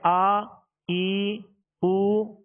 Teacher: اب اس کو تھوڑا سا دراز کر دیا نا، جیسے آ ای او، تو اب یہ حرکت نہ رہی بلکہ اس میں حرف مد پیدا ہو گیا، یہ دراز ہو گئی۔